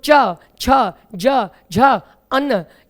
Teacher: तालू से उच्चारित होते हैं तो च छ ज झ अन्न ये आपके तालू की सहायता से जीव तालू पर स्पर्श करती है तभी इनका उच्चारण हो पाता है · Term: चा वर्ग